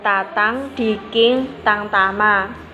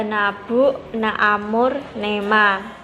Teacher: bunyi eng nasal dorsovelar dan n nasal apigo-alveolar